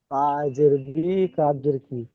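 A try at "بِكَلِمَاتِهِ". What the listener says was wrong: বাসের বি কাবজের কি বলছেন, এই কাপের উপরেই যাবার রয়েছে। বাসের বি, কাব সাবার কা, বিকা, লাম সেরলি, বিকালি। মিম খা যাবার মা, বিকালি মা। তাজের তি, বিকালি মা তি। হা খাজের হি, বিকালি মা তিহি। বিকালি মাতি, হা খারাজের হি।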